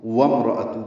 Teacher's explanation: واو کو میم سے ملائیں گے کیونکہ امرا کا حمزہ عارضی ہوتا ہے